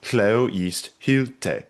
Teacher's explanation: in Old English meter, the most common half line type is hleo yeast hylte. This on off, it's two trochees, this on off.